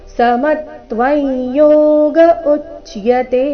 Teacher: ಸಮತ್ವವೈ ಯೋಗ ಉಚ್ಚತೆ ಸಮತ್ವ ಮೇಲೆ ಆಘಾತ ಸಮತ್ವವೈ ಯೋಗ ಅನುಸ್ವಾರದ ಉಚ್ಚಾರಣೆ ನಾಸಿಕ ಯ ರೀತಿ ಕಾರಣ ಮುಂದಿನ ಶಬ್ದ ಯೋಗ